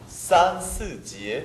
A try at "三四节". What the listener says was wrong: 아가 주요 모음이죠. 절대 스 발음이 끝나기 전에 입을 열면 안 돼요. 입을 여니까 스 이렇게 돼요. 으 발음이 잘 안 나니까 항상 주의하셔야 돼요.